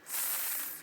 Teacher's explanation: th, which is like a S, but if you put your tongue right at your teeth